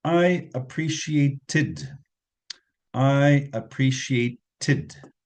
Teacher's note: it's a regular verb so it's Ed in the past tense with a different pronunciation tid